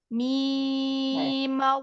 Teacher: mimnya langsung fathah masuk ke Allah. Ma-nya juga 6 harokat.